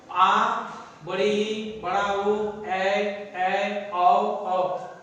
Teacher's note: दीर्घ स्वर में क्या होता है कि ह्रस्व स्वर की अपेक्षा दुगुना समय लगता है, यानी इसको बोलने में हम लोग को ह्रस्व स्वर की अपेक्षा दुगुना समय लगता है।